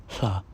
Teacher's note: For example, the consonant cluster H and L next to each other would result in a voiceless lateral approximant. Not a voiceless lateral fricative, that would be sh, but it results in a voiceless lateral approximant, hl.